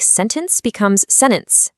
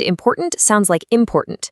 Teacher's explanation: And finally, we have the glottle T, which is maybe the most surprising one. This is where the T sound basically vanishes, especially when it comes after the letter N. So, a word like sentence becomes sentence, and important sounds like important.